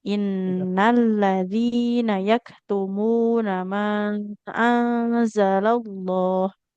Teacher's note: Innalladzina yaktumuna huruf kafnya harus mengalirkan nafas.